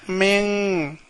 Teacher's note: நூன் சத்தம் கொடுக்காம ங் சத்தம் கொடுத்து ஓத வேண்டும்